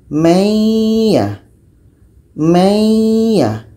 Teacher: dengan Ya iya ini adalah huruf Idgham Bighunnah jadi cara bacanya bunyi Nun ini kita masukkan kepada bunyi ya